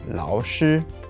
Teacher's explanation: so that's third tone first tone of course